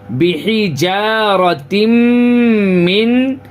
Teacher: کئی ویڈیو میں ہم نے بتایا ہے کہ نون اور میم پر تشدید آئے یعنی شدہ آئے تو غنہ کے ساتھ پڑھیں گے. غنہ یعنی ناک میں آواز روکیں گے